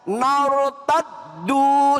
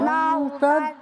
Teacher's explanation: Nar itu rnya di sukun diiringi oleh harakat fathah di sini maka dibaca tafhim ya. Dibaca teb tebal.